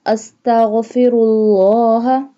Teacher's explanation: اللہ کو موٹا کریں گے، پر کر کے پڑھیں گے، کیونکہ اللہ سے پہلے جو لفظ ہے یعنی را اس کے اوپر دمہ ہے۔